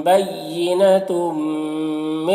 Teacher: تنوین کو میم سے ملا کر غنہ کے ساتھ میں پڑھیں گے، اس کو ادغام ناقص کہتے ہیں.